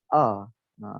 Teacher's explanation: A ni dia tak ada dengung. Dia tak guna langsung rongga hidung. A. Dia guna rongga daripada mulut kita, daripada leher kita.